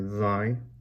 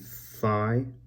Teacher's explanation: thy, you hear a different it's voiced, and thigh is not voiced